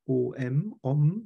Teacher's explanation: Ein Om hat irgendwie so ein Bop am Ende, ein M, dass das O stoppt.